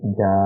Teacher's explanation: مثلاً یہاں پر جو ہم نے لفظ پڑھا تھا جا، جب اس پر وقف کریں گے تو اسے پڑھیں گے جا، تو جب حمزہ پہ روکیں گے تو ایک ہلکی سی معمولی سی جھٹکے کی آواز آئے گی. یہ جب آئے گی جب حمزہ کے اوپر جزم ہوگا.